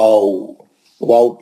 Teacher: होठ मिलते नहीं इसमें इसमें होठों के दरमियान गोलाई रहती है। होठों होठ एक दूसरे से मिलते नहीं इसमें। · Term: वाऊ का मखरज